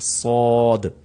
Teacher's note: اس میں سیٹی کی آواز بھی آئے گی لیکن اس کو ساد نہیں پڑھا جائے گا بلکہ تھوڑا سا موٹا کر کے پڑھا جائے گا